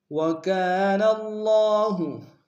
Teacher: کاف کے الف مدہ ایک مقدار میں کھینچیں گے